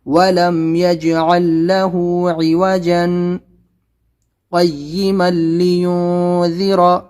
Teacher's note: یہ ہے ولم یج، قلقلہ کریں گے، یجعل لہ، اور یہ عوجن کے بعد میں سکتا ہے، یہاں پر وقفہ سے تھوڑا کم ٹھہرنا ہے، تھوڑا کم رکنا ہے، لیکن سانس کو نہیں توڑنا ہے۔ تو دیکھیے کیسے پڑھنا ہے، وَلَمْ يَجْعَلْ لَهُ عِوَجًا قَيِّمًا لِيُنذِرَ، تھوڑا سا سکتہ کرنا ہے، سانس کو نہیں توڑنا ہے، یعنی کہ یہاں پر آپ 2 سیکنڈ رک جائیں، یہاں پر 3 سیکنڈ رک جائیں۔